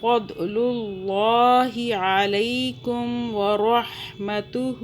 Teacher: عین کو حلق سے پڑھنا ہے، حا کو بھی حلق سے، ضاد کو دو پڑھنا ہے، دال کی آواز میں نہیں پڑھنا۔